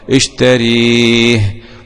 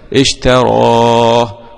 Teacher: قرأ أبو عمرو وحمزة والكسائي وخلف بالإمالة المحضة